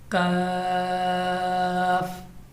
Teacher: زبان کی جڑ اور تالو کے سخت حصہ سے ادا ہونے والا ہے